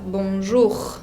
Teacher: Ese R final se tiene que escuchar.